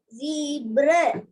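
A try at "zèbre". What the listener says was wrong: Not zebra. Ze. E with the accent grave. Pronunciation is ze.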